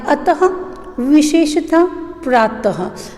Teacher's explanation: विसर्ग का उच्चारण करते समय ह का उच्चारण होता है